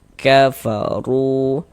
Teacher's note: Sehingganya ru dibaca panjang. Mad thobbi'i panjang dua harakat sesuai rumus dua warna hitam.